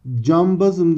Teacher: B sesi kendinden önce gelen N sesini M'ye dönüştürmüş. Dolayısıyla bu MN değişimidir.